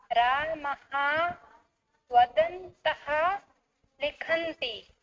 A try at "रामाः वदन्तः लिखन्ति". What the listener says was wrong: इतोपि बहुवचने उच्चारणं सम्यक् स्यात्, अथवा रामः रामाः मध्ये भेदः एव न भवति न। रामः रामाः।